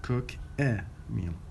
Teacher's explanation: because a is turned into schwa and linked to the previous word, it becomes like cooker, but it is cook a meal.